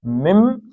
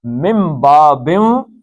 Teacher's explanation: نون کے بعد بے آ گئی ہے تو یہ میم پڑھا جائے گا، نون نہیں پڑھا جائے گا